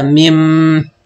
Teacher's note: فبالتالي أنا بما أنه مش مرسوم حرف العلة، فبأقف عليه بحذف حرف العلة، يعني ما بنطقه